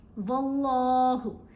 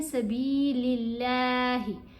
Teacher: اللہ کی لام کو باریک پڑھا جائے گا